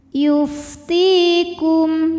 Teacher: Kum ada hukum idhar syafawi sebab mim sukun menghadapi huruf selain mim dan ba, yaitu huruf fa, maka mim sukun kita bunyikan dengan jelas